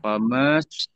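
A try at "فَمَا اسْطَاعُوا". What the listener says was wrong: Famanya pendek. Maknya jadi pendek. Jangan famas. Enggak. Ini karena setelah matobi ada huruf mati. Famas jadi pendek ya.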